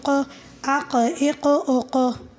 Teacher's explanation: اوس دی قاف کې قلقله ده، قاف ساکنه مخکې زبر زیر پیش دی